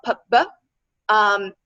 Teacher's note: P and B are produced with the lips, which means they're bilabial